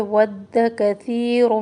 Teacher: ود واو ہونٹوں کے گلے سے، دال کے اوپر تشدید ہے. ود کثیر، ثا نرمی سے پڑھنا ہے، سین نہیں پڑھنا